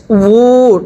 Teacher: ওয়াও উল্টা পেশ উ, ঠোঁটগুলো গোল হবে। আবার ওয়াও উল্টা পেশ উ, এরপরে হা উল্টা পেশ হু, সবাই পড়বেন হা উল্টা পেশ হু, এগুলোর মধ্যে কিন্তু এক আলিফ টানতে হবে।